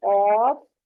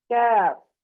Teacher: قاف اور دوسرا کاف جو ہے زبان کو کاف کی ہی جگہ سے کچھ منہ کی طرف جو سخت تالو ہے اس کو لگائیں تو باریک آواز کے ساتھ کاف ادا ہوگا۔ قاف پر ہے، کاف باریک ہے